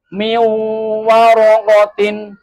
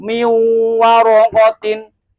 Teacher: Di sini ada nun sukun bertemu dengan wawu, maka nun sukunnya suara atau bunyi nun sukun hilang. Minya langsung ke wawu. Miu dan dibaca dengung. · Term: idgham bi gunnah